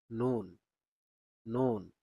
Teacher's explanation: জিহ্বার আগা যখন উপরের তালুর সাথে লাগবে তখন নুন উচ্চারিত হবে।